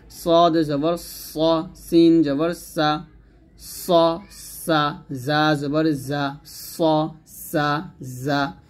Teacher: গ খ জবর খ তারপর হচ্ছে সফির সফির মানে শীষ দেওয়া সফির হরফ তিনটা সদ সিন যা উচ্চারণে তীক্ষ্ণ আর শীষ দেওয়ার মত শব্দ হয়